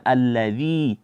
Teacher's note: Jadi dibaca seperti biasa saja, alladzi, tanpa ada suara dari hidung.